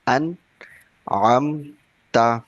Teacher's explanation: We read clearly without gunna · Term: izhar